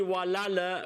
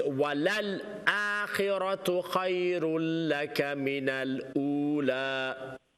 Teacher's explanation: Okay, don't say walala because the second lam has a sukoon, so there's no qalqala, so it's walal akhiratu khayrun laka min al ula.